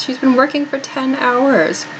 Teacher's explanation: This one, keep in mind, we often reduce this. She has gets reduced in speech to she's.